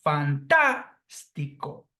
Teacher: that is comprised of Fantastico four syllables but we see that the phonetic accentuation Falls here on the third syllable from the end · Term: proparoxytone words